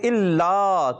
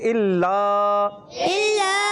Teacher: ایک الف یعنی 2 حرکات کی مقدار. اس کو کھینچ کر پڑھیں گے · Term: الف مدہ